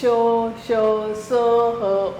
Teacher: तीसरा है उष्म व्यंजन। इन वर्णों का उच्चारण करते समय श्वास गति से मुख से रगड़ खाती हुई बाहर निकलती है जिससे गर्मी उत्पन्न होती है। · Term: ऊष्म व्यंजन